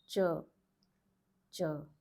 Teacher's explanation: It's not cha, it is ch, ch, non-aspirated.